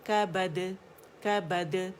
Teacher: جو قلقلہ ہوتا ہے نا اس کی آواز اوپر جاتی ہے, آپ یہ سمجھ لیں سمجھانے کے لیے ہاف زبر ٹھیک ہے.